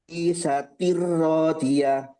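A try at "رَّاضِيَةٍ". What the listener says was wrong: Ro-nya panjang. Radiyah.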